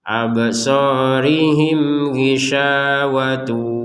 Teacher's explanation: mim sukun bertemu ghin kita baca dengan jelas. Absarihim ghishawatu walahum, sya dua harokat.